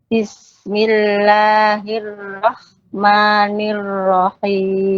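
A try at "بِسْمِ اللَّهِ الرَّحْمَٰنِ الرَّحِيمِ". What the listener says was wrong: Ya, agak masuk ke kho itu. Bismillahirrahmanirrahim. Bukan roh. Roh itu kho.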